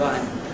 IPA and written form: aɪ.m (I'm)